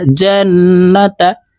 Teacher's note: এই জিম নুনের সাথে গুন্নার সহিত পড়ব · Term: ওয়াজিব গুন্নাহ